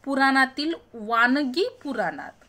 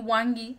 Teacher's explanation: तिथे मूळ म्हण होती पुराणातील वानगी पुराणात. आता हा न जो आहे हा आपण काय करून टाकलाय? त्या ठिकाणी उच्चार बदलत त्याचा अनुस्वार करून टाकलाय.